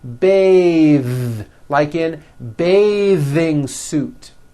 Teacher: when you change it into a verb, to bathe, the vowel changes to an A sound and the TH is voiced